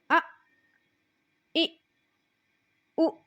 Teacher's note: دونوں حمزہ ہیں تو اس حمزہ کو ہم نے جھٹکا دے کر پڑھنا ہے۔